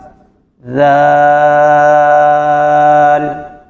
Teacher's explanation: اس کو ادا کرتے ہوئے سیٹی کی آواز نہیں آئے گی، بالکل اس کو نرمی کے ساتھ پڑھیں گے، بالکل نرمی کے ساتھ.